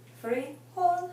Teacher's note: it ends in an l and an L is not an n s or a vowel so therefore we stress the last syllable